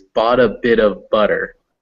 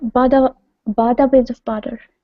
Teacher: Boughta with those kind of D-ish sounds, those taps.